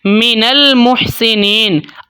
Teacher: جیسے کہ یہاں پہ دیکھیں ایک مثال آپ کو دوں گا، جیسے کہ یہاں پہ دیکھیں من المحسنین، اب نون کے اوپر کیا ہے؟ نون کے اوپر زبر ہے، نون کو ہم ملا رہے ہیں لام کے ساتھ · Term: غنہ آنی